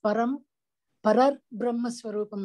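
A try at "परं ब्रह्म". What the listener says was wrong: Why Parar Brahma? Param Brahma only, right? Not Parar. It is not Parar. Brahma is Napumsakalinga. So therefore qualified by Param. Param is also Napumsakalinga. Therefore not Parar Brahma. It is Param Brahma.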